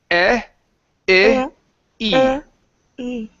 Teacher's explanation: When you get to the long E, your tongue then has to raise higher than the base of your top teeth